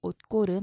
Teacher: 옷고름도 역시 시옷이 대표음 디귿이죠. 받침 디귿 뒤에 기역, 된소리로 바뀌어야겠죠.